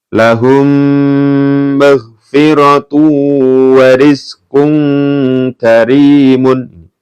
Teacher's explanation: dibaca mendengung Kenapa karena ada mim sukun bertemu dengan mim hukumnya idgham mimi